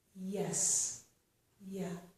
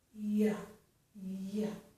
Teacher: For this sound, we raise our tongue towards the hard palate. We raise the middle part of our tongue up close to the hard palate